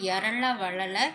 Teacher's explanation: இந்த இடையின எழுத்துக்கள் வந்து கழுத்துல இருந்து பிறக்கிறது அதாவது தலைக்கும் உடம்புக்கும் இடையில கழுத்து இருக்கிற மாதிரி இந்த எழுத்துக்கள் வந்து நம்ம